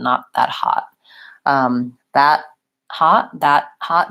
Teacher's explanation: I'm definitely making that stop T with my tongue behind my teeth